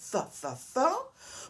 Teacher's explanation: Le th, ça s'appelle un son non voisé. Ça veut dire que si vous mettez la main sur la gorge, vous ne sentez pas de vibration. Th. Pourtant, quand vous dites the, c'est un son voisé.